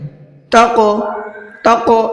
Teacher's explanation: اور قاف حروف قلقلہ میں سے ہے اور اس کے اوپر جزم بھی ہے، اور جب قلقلہ کے جو 5 حروف ہیں ان میں سے کسی ایک پر بھی اگر جزم آ جاتا ہے تو پھر اس میں قلقلہ کرتے ہیں، یعنی ہلکا سا آواز کو ڈبل کرتے ہیں